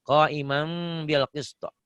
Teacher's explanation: Jadi kok imam bunyi M, bibir atas bibir bawah mingkem tapi bindeng. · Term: iklab